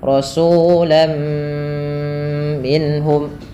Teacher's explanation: Rasulan menjadi rasulam, sehingga terdengar bunyi suara huruf mim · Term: idgham bi gunnah